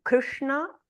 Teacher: the Sha and the na are all retroflex